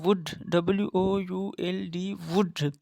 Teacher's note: Back of the tongue is raised towards the soft palate as in vowel U. The lips are rounded in wood. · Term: Semi-vowel